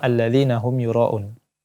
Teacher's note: Yuro di sini ada mad wajib make dipanjangkan lagi